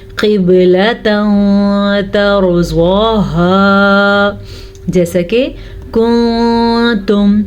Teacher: तो जब नून साकिन या तनवीन के बाद वाला हर्फ हरूफ इख्वा में से हो तो नून साकिन या तनवीन की आवाज़ को छुपा के पढ़ते हैं और गुन्ने के साथ भी पढ़ते हैं · देखें मैंने दोनों जगह पे छुपाया है नून की आवाज़ को।